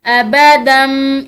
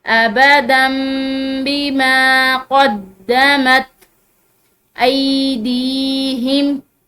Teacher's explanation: تنوین ہے اور تنوین کے بعد با موجود ہے تو یہ تنوین جو ہے یہ میم ساکن سے میم سے بدل جاتی ہے، ٹھیک ہے، تو تنوین ہو یا نون ساکن ہو اس کے بعد اگر با آ جائے تو پھر وہ تنوین یا نون ساکن جو ہے وہ میم سے بدل جاتا ہے، یعنی اس تنوین اور نون ساکن کی بجائے میم پڑی جاتی ہے۔